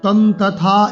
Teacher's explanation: তং অনুস্বার আছে, পরে ত আছে, তাহলে ত বর্গের পঞ্চম বর্ণ হচ্ছে ন, ত থ দ দ ন।